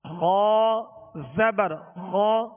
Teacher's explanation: غا کو پر کیوں پڑھیں گے؟ حروف مستعلیہ میں سے ہے